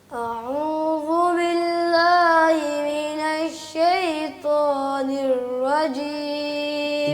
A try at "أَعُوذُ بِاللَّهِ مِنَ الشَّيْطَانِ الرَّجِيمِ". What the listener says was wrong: جی را بھی باقی ہے، را کو واضح کریں، منہ کھول کے پڑھیں. را کو را کی پریکٹس کرنے کی ضرورت ہے.